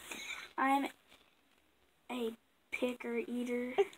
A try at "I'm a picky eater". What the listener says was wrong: Not a picker eater. Yeah, you said picker.